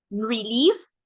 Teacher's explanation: we have the stress at the end right we have one un stress syllable and one stressed syllable